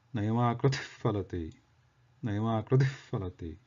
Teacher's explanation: after the visarga and fakara, they tend to merge together. So that gives a distinct, different sound than separately saying visarga and the sound fa. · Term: Upadhmaniya